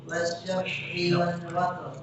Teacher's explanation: Wasyaf'i bukan wasyaf' wal syaf'. Ada qalqalah.